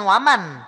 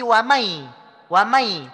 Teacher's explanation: nun dan mim tidak terdengar jelas. Terdengarnya samar-samar, terdengarnya bias. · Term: gunnah kamilah